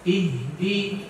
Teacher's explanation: huruf ha itu ada hams ada aliran nafas jangan sampai akhirnya hilang